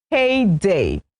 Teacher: H-E-Y-D-A-Y. It is a noun and it is pronounced heyday. So the stress is on the first syllable.